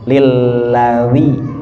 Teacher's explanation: Sajada wajhiya lillazi. Ri-nya itu dal yang ada titiknya, yang ujung lidah ke ujung gigi seri atas